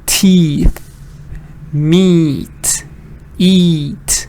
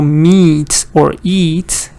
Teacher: So meat or eat, it's pretty much like you're smiling. That's a long E. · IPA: /iː/